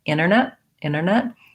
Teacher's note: you don't want to linger on that n if you're going to leave the t out so i don't want internet internet with a long n as